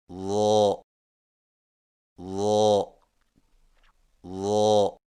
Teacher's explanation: ظا کی ادائیگی میں زبان کی نوک کو سامنے والے اوپر کے دو دانتوں کے اندرونی کناروں سے نرمی سے لگا کر اور زبان کے پچھلے حصے کو تالو کی طرف بلند کرتے ہوئے موٹی آواز میں پڑھیں